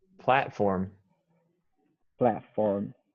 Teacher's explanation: I would say platform without the T sound.